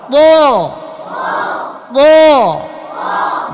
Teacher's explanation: জিহ্বার গোড়া জিহ্বার মধ্যখান উঁচু করে দিতে হবে। হ্যাঁ ঠোঁট গোল করা যাবে না। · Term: মোটা আওয়াজ